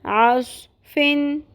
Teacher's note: صاد کو ہم نے پر کرنا ہے، عین کا مخرج کلیئر کرنا ہے، قلقلہ نہیں ہونے دینا